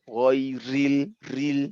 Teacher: Tapi pada saat dia kasroh, ghairil, ril, nah, dia menjadi sangat tipis. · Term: ro tipis